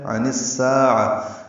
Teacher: عن اور الساعہ ملا دیں گے، عین وسط حلق سے ادا کریں گے · سا الف مدہ ہے، سین کو باریک پڑھیں گے، 2 حرکات لمبا کریں گے